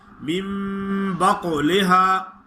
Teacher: قاف پہ قلقلہ ادا کریں اس کو خوب موٹا کریں